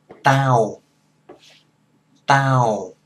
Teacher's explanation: the Vietnamese T is halfway between a D and the English T.